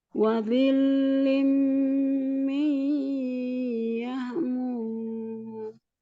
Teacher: Ketika lam tasdid sifatnya lunak saja ya, tidak ditahan.